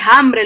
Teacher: la h procedente de la f inicial latina quiere decir que la h inicio de palabra es pronunciada como j un poco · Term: aspiración de la h